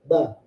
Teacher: Makhraj itu tempat keluar. Tempat keluarnya dari pertemuan kedua bibir. Bertemu dulu dua bibirnya. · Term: huruf ba